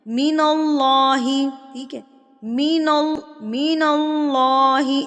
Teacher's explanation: مین اللہ، ناک میں آواز گئی ہے، کھینچنا نہیں ہے، لمبا نہیں کرنا، اس کو ہم نے فوری سے ادا کرنا ہے۔ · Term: غنہ آنی